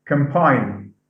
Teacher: So we have double M. The N goes to M sound, which is bilabial, because of the following sound.